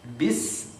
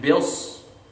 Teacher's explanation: So the difference between me saying bis and bils is thick and thin, but the sound comes from the same place, right? Sound comes from the same place.